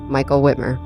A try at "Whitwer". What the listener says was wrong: Whitwer. He put an M in there. Whitmer. It's Whitwer.